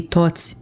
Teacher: When you have a word with an I at the end, you aren't really pronouncing the I. Your mouth goes into like a smile shape, and just you saying toți while you end saying that word with your mouth in a smile shape makes that very faint I sound.